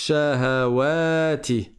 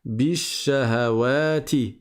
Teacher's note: Sauf que le a je ne le lis pas parce que c'est au milieu de la phrase. Le lam je ne le lis pas parce que la lettre suivante est solaire grâce à la shadda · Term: lettre solaire